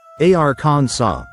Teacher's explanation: In French that final s is silent. So they pronounced the word something like arans saw.